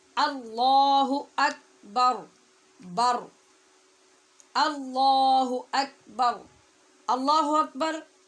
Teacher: آخر پہ جو را ہے وہ را بھی پر پڑھی جائے گی، ساکن کرتے ہوئے